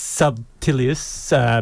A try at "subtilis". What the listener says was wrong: You added so many syllables.